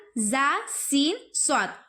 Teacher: زبان کی نوک اور سامنے کے اوپر نیچے والے 4 دانتوں کے کنارے سے ادا ہوتے ہیں. اور ایک اور مخرج ہے کہ سیٹی کی سی آواز آتی ہے ان میں, زا سین صاد, ٹھیک ہے.